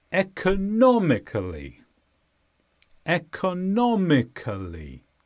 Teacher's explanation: The stress is on non.